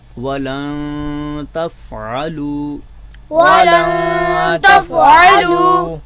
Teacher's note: اخفا کے معنی چھپا لینا, یعنی مخرج میں جو ہے وہ چھپ جانا. تو لہٰذا نون کو ہم اپنے مخرج سے مخرج میں چھپا کر جو ہے وہ پڑھیں گے · حرف نون ساکن ہے اور نون ساکن کے بعد والا جو حرف تا ہے تو اس کی وجہ سے ہم نون پر جو ہے وہ اخفا کریں گے